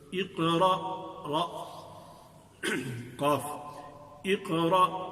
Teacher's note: تو اقرأ قاف، اقرأ قاف ساکن ہے، تو یہاں قاف جو کہ موٹی قاف ہے، قل والی قاف ہے، تو قرآن والی قاف ہے، تو اس کو بھی تفخیم کے ساتھ موٹا کر کے پڑھیں گے. اور چونکہ یہ ساکن ہے، یہاں اس پر زبر زیر پیش نہیں ہے، تو اس کو تھوڑا سا اس کی آواز میں ایک حرکت سی پیدا کریں گے.